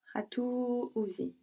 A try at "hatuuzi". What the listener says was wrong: Hatuuzi. Good.